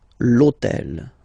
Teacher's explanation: in French we don't pronounce H, okay, so basically the first sound of the word is the vowel O, okay, so for the same reason, needs to disappear.